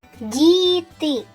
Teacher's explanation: в цьому слові звук д вимовляється м'яко Тому це М'який приголосний